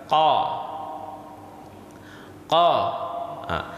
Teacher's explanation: qaf itu berada di lidah bahagian belakang.